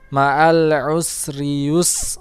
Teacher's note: kemudian sin yang sukun, dia keluarnya desis